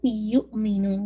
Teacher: حمزہ پہ بہت جرک واضح ہوگا آواز ہلکی سی اس میں ایلیویٹ ہوتی ہے